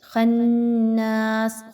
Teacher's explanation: خناس، خا جو ہے وہ آلریڈی موٹا حرف ہے، اس کو پر پڑھا جائے گا. نون پہ نون مشدد کا غنہ کر کے الف مدہ کو 1 سے 2 الف کے برابر کھینچ کے لمبا کر کے پڑھیں گے